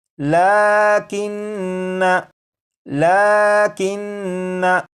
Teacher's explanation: इसके आखिर में जो नून मुशद्दद है इसमें गुन्ना करके पढ़ेंगे